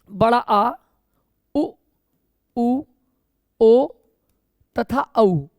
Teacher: ये बच्चों 5 स्वर जो है पश्च स्वर है। ये जीभ के पीछे के हिस्से से उच्चारित होते हैं